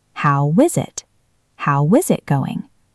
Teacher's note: How w is. Then we link the z sound at the end of is to the I in it